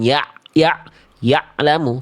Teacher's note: Karena ain sukunnya tertahan suaranya, terputus dengan huruf lamnya. Harusnya sedikit mengalir karena tadi sifatnya tawasud.